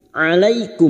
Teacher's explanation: mim sukun bertemu Ain Idhar syafawi mim sukun dibaca jelas tanpa mendengung